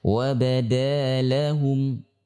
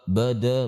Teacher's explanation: Yang pertama sifat istifal, yaitu pangkal lidah yang datar atau kita sebut dengan tipis ya.